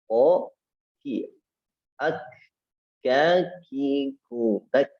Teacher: pangkal lidah bertemu dengan langit-langit yang lunak dan keras sekaligus. Sedikit di bawah makhraj huruf qaf, keluar huruf kaf. · Makhrajnya ada pada pangkal lidah lebih ke depan dibanding huruf qaf